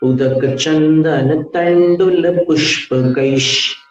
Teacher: विसर्जनीय जो है वो श बन गया